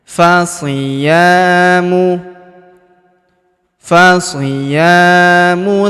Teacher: Huruf ya kita panjangkan dua harakat karena terdapat alif di depannya. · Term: panjangkan 2 harokat